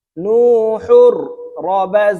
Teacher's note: তানুইনের পরে র ইদগমে বেলা গুন্নার হরফ আসছে তাই এই হা র এর সাথে গুন্না ছাড়া মিলাইয়া পড়তে হবে